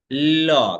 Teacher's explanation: দিয়ে বের হচ্ছে উচ্চারণের ভঙ্গির একেবারে ভিন্নতা রয়েছে ফলে বলা হচ্ছে যেহেতু এটি উচ্চারণের সময়ে বাতাস জিহবার দুই পাশ দিয়ে বের হয়ে যাচ্ছে তাই একে বলা হচ্ছে পার্ষিক ধ্বনি · ল বলার ক্ষেত্রে দেখো আগে জিহ্বার অগ্রভাগ দন্তমূলের সাথে যে লাগে, ল, খেয়াল করো, তুমি তো ল এমন করবে না, এটা বলতে যাও, দেখো আগে জিহ্বার অগ্রভাগ দন্তমূলের সাথে যে মিশে পড়ছে। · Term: পার্শ্বিক ধ্বনি